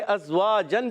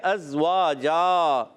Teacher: ازواجا واو الف زبر وا، الف مدہ ایک الف کھینچیں گے. دو زبر کی تنوین کو وف کی صورت میں الف سے بدل دیں گے